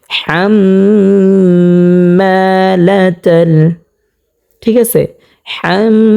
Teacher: তো প্রিয় দর্শক, আমরা কিন্তু এখানে হরকতের বামে মিমের মধ্যে তাসদিদ পেয়েছি, সেই কারণে এখানে আমরা গুন্না করে পড়ব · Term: ওয়াজিব গুন্না